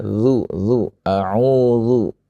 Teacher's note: zal dari gigi seri yang atas dengan apa? Dengan ujung lidah.